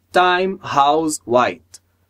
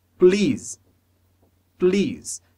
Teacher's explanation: a gente nunca fala esse E no final das palavras